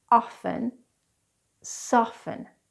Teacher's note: many English often drop the T in the word often soften but you don't have to some people pronounce it some people